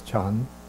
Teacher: Originally in Chinese it would have been pronounced chan-na, chan-na, but then they dropped to make it one syllable, they dropped the n, so it just becomes chan